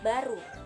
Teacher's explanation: Yang kedua bunyi B. Ciri-cirinya hidup, oral, bilabial, plosif.